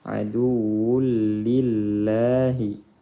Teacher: Lam jalalah tarqiq karena sebelumnya kasrah